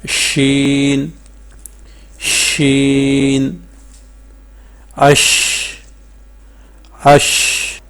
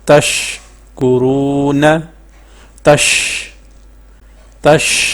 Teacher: شین جب ہم ادا کرتے ہیں تو ادا کرتے وقت آواز جو ہے منہ میں پھیل جاتی ہے۔ جیسے دیکھیں، آپ ادا کریں، شین شین، اش اش، دیکھیں آواز جو ہے منہ میں پھیل رہی ہے۔ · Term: تفشی